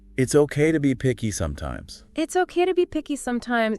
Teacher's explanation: The contraction of it is followed by the unstressed infinitive to be which often gets reduced in speech to true by or even to by very short vowel and then picky.